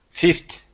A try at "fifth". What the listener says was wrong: So just really practice those TH sounds because I'm hearing fifth, like a T. I want to hear the th. Fifth. Fifth.